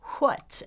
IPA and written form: ʰwʌt (what)